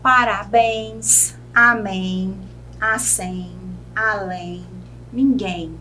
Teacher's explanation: todas são oxítonas tem a última sílaba mais forte a sílaba tônica e são terminadas em é m ou m s maracujá tamanduá